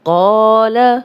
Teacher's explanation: اب قاف کو موٹا پڑھیں گے اور الف مدہ بھی ہے، 2 حرکات لمبا کریں گے۔